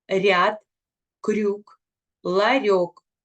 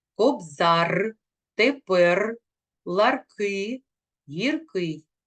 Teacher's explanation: приголосний р буває м'яким тільки перед голосними ряд крюк ларьок у кінці слова і перед приголосними він вимовляється твердо